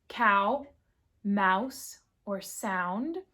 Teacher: And now we have A U the bright A U as in cow mouse or sound. So you combine that bright A with the U sound.